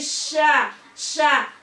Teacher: Sya pokoknya ini shin ini dari tengah lidah gitu ya.